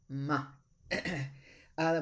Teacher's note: It's a bilabial because it uses the 2 lips.